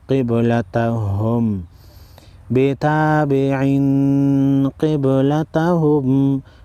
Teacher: با ساکن پر قلقلہ کریں گے، قاف کو موٹا پڑھیں گے، تنوین کو غنہ کریں گے، اخفاء حقیقی ہوگا۔